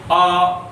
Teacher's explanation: तो पूरा मुंह खुल गया और जहां पूरा मुंह खुल जाएगा वहां विवृत स्वर हो जाएगा। और उसके बाद अर्धवृत, अर्धवृत कह लो या अर्धविवृत कह लो।